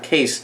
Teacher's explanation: 那 case 开头的 k 的音是有气音，但是我们 what's inside 我们这里没有气音